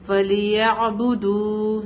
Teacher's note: دال پر واو مد ہے, اس کو تھوڑا کھینچ کے پڑھیں گے